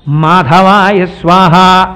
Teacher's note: పెదవులు రెండు కలుసుకుంటే వచ్చేటటువంటి అక్షరం పలకాలి